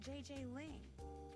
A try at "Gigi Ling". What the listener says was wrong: You mean Gigi Ling? Gigi. En français, you pronounce G like J and J like G. She may very well be JJ in America, but in France, she is Gigi.